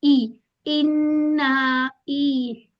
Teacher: आप लोगों ने इसको मजहूल नहीं पढ़ना। ए की साउंड नहीं आनी चाहिए।